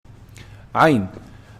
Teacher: Ayn is pronounced from the middle of the throat.